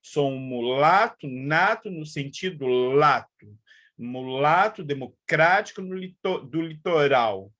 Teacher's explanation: E no exemplo do Caetano, a repetição da vogal tônica, das vogais tônicas, A. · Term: assonância